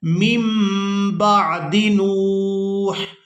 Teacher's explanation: یہاں پر نون ساکن تھا اور اس کے فوراً بعد با آ گئی تھی، تو یہاں پر ہم نے نون کو میم کے ساتھ بدل کر ادا کرنا ہے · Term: اقلاب